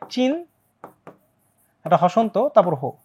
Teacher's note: ন পরে হ অর্থাৎ এটার উচ্চারণটা হয়ে যাবে উল্টা